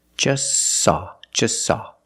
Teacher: You link the S with the S. Link them together.